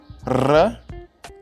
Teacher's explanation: vibrantes múltiplas, produzidas através de vibrações de um dos órgãos articuladores do sistema vocal contra outro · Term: vibrante múltipla